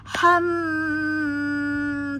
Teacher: tahan pada mim musadadah, wajib dengung 2 harokat